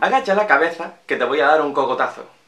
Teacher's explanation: En primer lugar tenemos lo que todos conocemos como el seseo generalizado, es decir, que solemos pronunciar las T's y las Z's como S's.